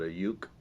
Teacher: If you do the one-syllable word, we call it a uke out here, as if there's a Y in front.